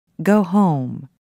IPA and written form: goʊ hoʊm (go home)